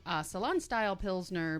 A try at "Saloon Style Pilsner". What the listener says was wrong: Salon? You said a salon. Salon